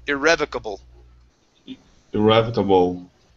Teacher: instead of bow at the end, bull. Give me a good L. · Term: L sound